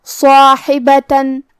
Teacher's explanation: صاد حروف التفخیم میں سے ہے تو ہم یہ حرف کو بھاری آواز میں اور منہ پھلا کے ادا کریں گے. اس کے بعد مد الف ہے اور کیونکہ مد الف اپنے پیچھے والے حرف کا حکم لیتا ہے تفخیم میں اور ترقیق میں تو ہم صاد کو اور مد الف کو دونوں کو بھاری آواز میں پڑھیں گے.